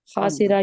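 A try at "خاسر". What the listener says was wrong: नहीं एक से खासिरा, देखिए जेर को आपने बड़ा प्रोमिनेंट करके पढ़ना है ताकि हमें पता होता है ये बाप सामने। खासिरा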